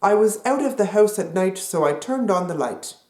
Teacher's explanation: Canadian raising also affects other ow sounds, such as house and scout, and also words with an I sound, such as height and light and night.